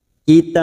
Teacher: Ujungnya jangan lupa dipantulkan karena terdapat huruf ba yang dibaca wakaf.